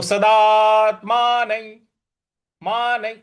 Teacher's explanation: सदात्मान, यहां पे देखिए सदा, उसके बाद दो बार एस लिखा हुआ है, तो सदा को दीर्घ खींचना है। तो सदात्मान मान, देखिए न के ऊपर जो अनुस्वार है उसके आगे य लिखा हुआ है, इसलिए उस अनुस्वार को य इस प्रकार से हम उच्चारण करेंगे।